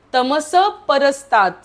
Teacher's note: हलंत न का कारण पुढे त आहे आदित्य वर्णन तमस परसतात स च्या वरचा विसर्ग अर्धा बोलायचा कारण पुढे प आहे